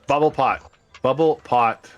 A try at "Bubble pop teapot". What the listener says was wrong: Not bubble pot. It's pop.